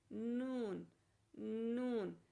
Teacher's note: زبان کا اگلا کنارہ جو ہے اوپر کے 6 دانتوں کے ساتھ جو ہے وہ لگتا ہے، اور اس کے اوپر دانتوں کے مسوڑوں کے ساتھ